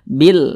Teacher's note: Maka alif lam berjumpa dengan huruf hamzah, hukumnya adalah alif lam qamariyah. Maka huruf lamnya dibaca bil, bil dibaca jelas, dibaca izhar, bil. Nah, kemudian huruf lam ini dia sukun nih, sukun.